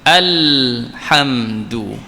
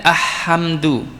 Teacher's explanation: Bagi alif lam qamariyah, bacanya ialah dinyatakan lam tersebut.